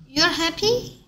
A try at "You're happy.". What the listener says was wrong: 왜 묻는 느낌이에요? You're 왜 계속 묻는 느낌이 들어요? You're happy. 똑바로 읽으세요.